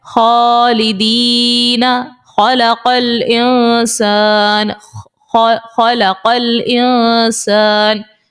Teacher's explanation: یوں ہی آپ خا کو دیکھیں تو خا بھی اوپر والے حلق سے ہی نکلے گا